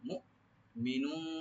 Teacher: মু, মু, এরকম না। মু মিনুন, এখানে তানবিন আছে, ইখফা করব আমরা লাইট গুন্না।